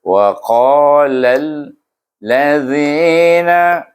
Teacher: Kemudian lam di sana bertemu dengan alif lam samsiah. Jadi kita idghamkan huruf lam kepada huruf lam samsiah itu. Alif lam samsiah jadi bunyinya wa qalal ladzina.